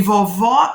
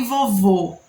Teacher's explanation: o acento agudo ele nos dá o som aberto e o acento circunflexo nos dá um som Fechado